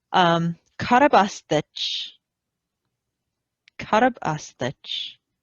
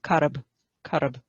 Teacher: There's a little epenthetic vowel between the R and the B.